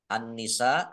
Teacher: langsung masuk ke huruf berikutnya yaitu Nun ditandai nunnya ada tasdidnya Nun tasdid dibaca gunah atau mendengung ditahan kira-kira dua harakat biar tampak dengungannya